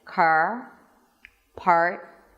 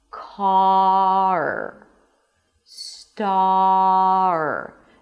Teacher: the vowel comes first and then only at the end there is the R. Car star. Do not raise your tongue before you're done pronouncing the vowel.